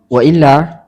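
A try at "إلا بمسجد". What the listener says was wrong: Ada wawunya.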